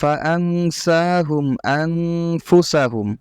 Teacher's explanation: নুন সাকিনের পরে ইকফার হরফ থাকলে এটা মূলত তখন আর নয়ের মতো উচ্চারণ হয় না, অনেকটা বাংলা অক্ষরের অনুস্কারের মতো উচ্চারিত হয়ে থাকে। আর এখানে সিন এবং এখানে ফা, এই দুইটাই মূলত হলো ইকফার অক্ষর।